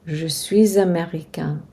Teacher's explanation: Américain has a nasal sound, so the N is pronounced subtly.